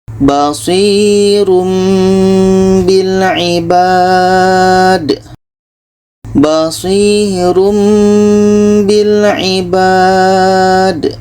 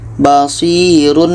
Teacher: Bunyi tanwin kita ubah kepada mim. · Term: iqlab, iklab